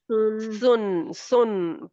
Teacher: صاد دو پیش سن سن سن پیچھے سے زبان کی جاڑ بھی اٹھے گی اور موٹا پڑا جائے گا